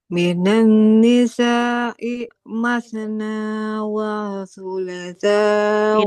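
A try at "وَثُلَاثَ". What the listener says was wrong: Tidak wa thulatha. Lamnya dipanjangkan. thulatha wa ruba'. Enggak ya, karena dia huruf waw berharokat fathah tidak bertemu alif. Masna wa thulatha wa ruba'.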